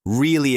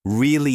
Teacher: We change our pitch to show how we feel. If you say really in a flat voice, it sounds bored. If you say really with energy, it sounds excited or surprised.